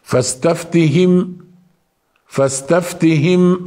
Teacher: الميم الساكنه المظهره كل الاحرف التي تاتي بعدها اح اظهار يعني نقرا الميم كما هي واما الحرف الذي بعدها يكون على حده يعني لا يؤثر على الميم